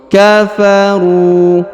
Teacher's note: huruf ru dipanjangkan dua harakat karena di depannya terdapat wau sukun